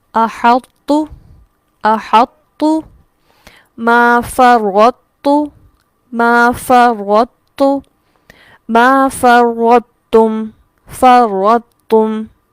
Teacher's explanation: تو کے مخرج کے ٹائم میں زبان جڑ سے اٹھے گی، اور جب ہم تا ادا کریں گے تو زبان جڑ کی طرف نہیں اٹھے گی اور یہ باریکی سے ادا ہوگا۔ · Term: تا کی باریک آواز, ادغام ناقص